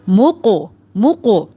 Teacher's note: ایک تو قاف موٹا کریں گے اور پھر ساتھ میں قلقلہ بھی ہوگا